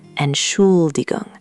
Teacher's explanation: the stress lands on the Schul part.